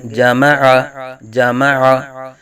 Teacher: حمزہ کی نہیں عین کی آواز نکالیں گے